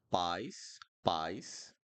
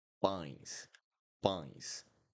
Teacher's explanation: Pies would be without a nasal sound